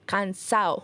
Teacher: que se usa la terminación en el habla informal como cansado la terminación sería ao omitiendo la de